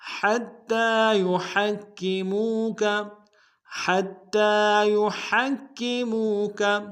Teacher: حتی میں ہا کو تا کے سامنے لائیں گے، تا کے اوپر تشدید زور دیں گے، اگلے تا کے اوپر کھڑا زبر ہے، ایک الف دال میں کھینچیں گے.